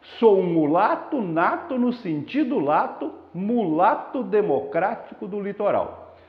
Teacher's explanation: A repetição da vogal A, principalmente, mas também do O, mas principalmente o A, forma claramente um efeito sonoro que a gente chama de assonância.